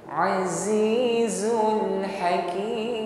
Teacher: harus kita tampakkan sifat shafirnya, dasis pada huruf zai